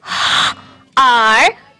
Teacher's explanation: In the word heart, the A sound and the R sound are together because we call it an R-controlled vowel.